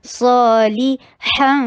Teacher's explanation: صا لی لام کے نیچے کسرہ ای کی ساؤنڈ. ہا میں بریتھ دیجیے جیسے گلاس صاف کرنے کے لیے کرتے ہیں, جیسے وکس کھا کے کی ساؤنڈ آتی ہے, وہی والی ہا کی ساؤنڈ پہلے آنی چاہیے اور پھر ہا ادا ہوگا, اور اس کے بعد اخفا ہو رہا ہے صالحا.